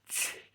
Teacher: And it's called an affricative, where it's not quite a fricative and it's not quite a plosive. The air pressure builds up and pops out like a plosive, so the plosive's at the start. But then as it goes through, you get that fricative sound.